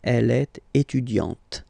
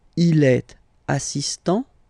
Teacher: Okay, t, t, t. Okay, you don't really insist on the E, but you insist quite much on the T